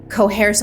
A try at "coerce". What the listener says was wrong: What's that word you're throwing around there? Are you adding a silent H to the word coerce? I feel like cohesion and coercion had a baby and it came out of your mouth.